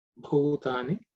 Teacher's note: The bhu is the fourth letter in the pa varga, so it has to be aspirated